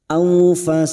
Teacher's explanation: Karena kita wakaf di sini 4 harokat kita panjangkan, bertemunya mad dengan huruf hidup yang dibaca wakaf. Karena kita memilih wakaf di sini maka ujungnya kita pantulkan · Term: qalqalah kubra